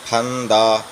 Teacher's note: پھا پڑھیں گے دونوں ہونٹ ملا کر، جیسے پا میں دونوں ہونٹ ملتے ہیں تو پھا میں بھی۔